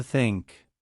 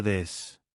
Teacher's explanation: Put your tongue between your teeth. Push air out for think. Add voice for this.